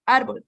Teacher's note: árbol, que es una palabra grave, ya que su sílaba tónica es penúltima